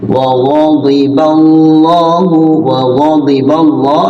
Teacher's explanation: lafzul Allah dibaca tafkhim tebal